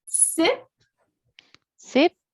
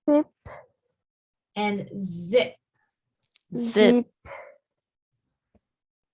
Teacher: so the S sound the S sound is unvoiced and the Z sound is voiced